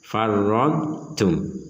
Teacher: dot sama sekali tidak boleh dimasukkan ke dalam ta sehingga menjadi farradtum.